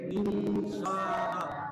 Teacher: সিন বর্ণ থাকার কারণে এখানে নুন সাকিনটাকে নাকের ভিতর লুকায় গুণনা করে